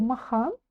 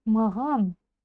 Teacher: сначала Прочитайте махан а затем более звонко Маган